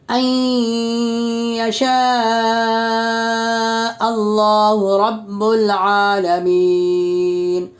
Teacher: نون ساکن کے بعد دوسرے کلمہ میں حروف ادغام کے 6 حرفوں میں سے یا ہے، اس لیے یا نون ساکن کا یا میں ادغام مع الغنہ ہوگا، اور ادغام مع الغنہ ادغام ناقص بھی کہتے ہیں، یعنی غنہ کے ساتھ ملا کر پڑھیں گے.